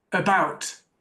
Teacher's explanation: The first sound in about in my accent is the schwa.